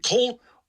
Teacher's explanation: you're raising the back of your tongue to sort of superimpose like a O kind of articulation on top of the L at the front of your mouth. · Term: dark L